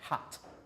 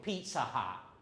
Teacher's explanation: with these unreleased, you make the sound, but no air comes out, even though it's aspirated sound.